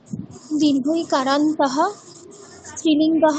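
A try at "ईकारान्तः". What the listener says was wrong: দরকার নেই, যখন বলবে ইকারান্ত, ইটা একটু টেনে দেবে, তাহলেই হয়ে যাবে। দীর্ঘ ইকারান্ত এরকম বলার দরকার নেই।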